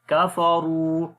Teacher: Ra we read in heavy sound and also we long due to Waw Madda.